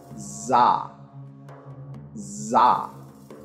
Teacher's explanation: a voiced alveolar fricative, which is produced the same way, with the tongue against the alveolar ridge, but engaging the vocal cords